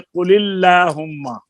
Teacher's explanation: لیکن لام سے پہلے کسرہ عارضی آ جائے قل اللہم، تو وہاں پر وہ لام کو زیر کی وجہ سے باریک پڑھ رہے ہیں